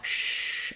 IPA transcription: ʃ